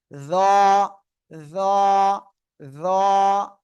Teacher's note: জিহ্বার আগা, সামনের উপরে দুই দাঁতের আগায় লাগিয়ে মোটা আওয়াজে উচ্চারণ করব।